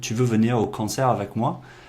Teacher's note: Again, nice informal way, putting basically the statement form and adding that upward inflection at the end to make it a question.